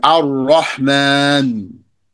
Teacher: And instead, you're going to double the ra. You're going to merge the lam into the ra